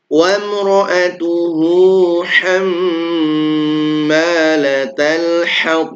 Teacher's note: Sebelum dan sesudahnya huruf hidup maka dibaca dua harakat. Mim yang bertasydid maka dia hukumnya ghunah yang dipanjangkan.